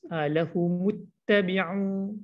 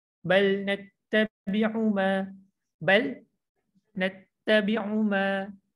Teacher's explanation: Okay, u jangan panjang. Kalau u pertama tadi lahumuttabi'u dua harakat kan. Okay, tabi'u yang seterusnya dia satu harakat je. Tak perlu kita panjangkan macam yang pertama tadi kan.